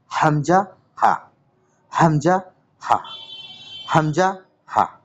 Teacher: হালাক বা কণ্ঠনালীর শুরু হতে উচ্চারিত হয়। হালাকের বা কণ্ঠনালীর শুরু হতে উচ্চারিত হয়, মানে আমাদের গলার সবার নিচের অংশ, অর্থাৎ আমাদের বুক থেকে কিছুটা উপরে যেখানে গলা শুরু হয়েছে সেখান থেকে উচ্চারিত হয় হামজা হা, হামজা হা, হামজা হা।